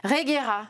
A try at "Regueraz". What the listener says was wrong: Regueraz. Alors finalement, non, vous avez raison en plus. Ah non, vous avez raison, c'est Reguera qu'on devrait dire.